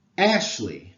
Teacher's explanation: So Ashley consists of a stressed syllable followed by an unstressed one. When you say Ashley aloud, the emphasis is on the first syllable.